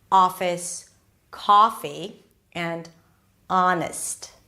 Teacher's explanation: And then the ah, my jaw is really open. The lips are not really rounded.